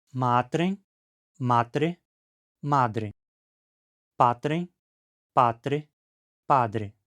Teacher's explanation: Temos o vozeamento de consoantes surdas não geminadas entre vogais ou entre uma vogal e uma líquida. Isso afeta primariamente as consoantes paka e ts que se tornam badag e nessas posições.